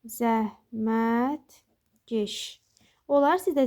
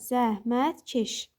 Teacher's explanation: yəni demək istəyirik ki, k-lar g-yə keçmir.